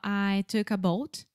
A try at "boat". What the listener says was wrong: if you don't really exaggerate the English L sound. It sounds like you're saying, I took a boat.